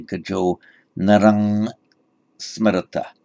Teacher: Anuswara tends to be pronounced always as a ng sound, whatever follows it. So if this were being read by a Thai, he might say Gajau Narang Smarata.